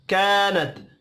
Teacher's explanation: ता साकिन पर कलकला नहीं करना।